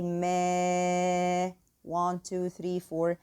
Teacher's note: we have here also again prolonging for 4 counts because the prolonging letter is followed by hamza. So I say ما, 1, 2, 3, 4, and then articulate the hamza properly.